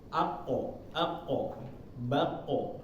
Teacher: ini adalah huruf tebal atau iste lah ya jadi ketika membacanya ketika dia sukun itu vokalnya lebih ke O Bulat